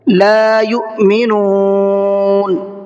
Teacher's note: لا یو، اور حمزہ میں تھوڑا سا جھٹکے کے ساتھ میں پڑھنا ہے، اس لیے کہ حمزہ ساکنہ ہے اور حمزہ ساکنہ کے پڑھنے میں جھٹکا ہوتا ہے